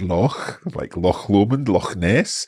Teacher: when you start with k, and then just add a little bit more breath into that k, yeah. But don't completely close your tongue and the roof of your mouth.